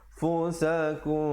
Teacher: Ikhfa syafawi dua harakat. Jangan lupa. Jangan tak panjangkan dua harakat pula.